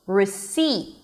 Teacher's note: the second syllable which is the primary stress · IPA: rɪˈsiːt